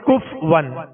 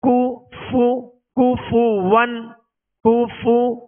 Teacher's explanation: اس کو بعض لوگ پڑھتے ہیں کف ون، تو کف ون نہیں، کاف پر پیش ہے، فا پر پیش ہے، دونوں کے پیش یہ صحیح سے ادا کریں گے، ہونٹوں کو گول بھی کریں گے اور بغیر کھینچے بغیر جھٹکا دیے معروف ادا کریں گے